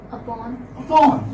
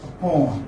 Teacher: So the stress would come on the second syllable.